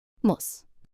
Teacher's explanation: In muss, the U is short. It's quick, like the U in push.